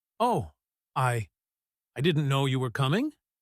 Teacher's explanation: Did you hear the hesitation? The pause after the word I? The voice was lower.